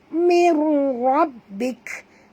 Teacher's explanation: Nun mati bertemu ra, tak boleh dengung. Namanya idgham bila guna, masuk tanpa dengung.